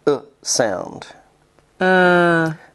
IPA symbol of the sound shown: ə